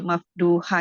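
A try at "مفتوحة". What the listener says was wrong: bukan mafduhah, maftuhah. M A F T U H A H maftuhah.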